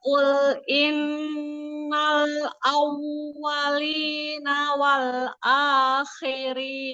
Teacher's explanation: Ya, tekankan awwalina, monyongkan ya ugirnya.